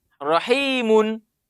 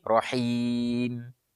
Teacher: kalau disambung tetap ada nampak ketika disambung tapi kalau kita wakaf dia hilang itu Nun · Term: tanwin